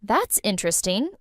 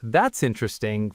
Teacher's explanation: flat with no emotion, it sounds like you're politely saying, I don't care. · with a rising tone and genuine curiosity in my voice, it means I really think it's interesting.